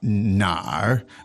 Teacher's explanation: Nar meaning where where and Nar is the third tone